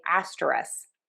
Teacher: I have to say most of the time I drop the K at the end of this word and say asteris. So I was listening to other people I do hear people say the K but a lot of times I hear people drop that K.